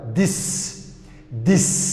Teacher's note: haddii ay noqoto voiced mid dhawaaqaysa waxaa loogu dhawaaqaa da